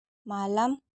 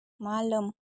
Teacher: Hanya penutur tertentu memvariasikan A pada kata-kata tertentu dengan lafal E.